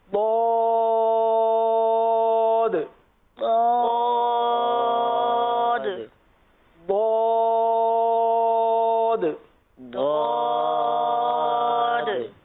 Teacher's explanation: زبان کی کروٹ اور اوپر کے داڑوں کی جڑ سے